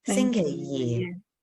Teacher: that yi is that low tone, flat tone yi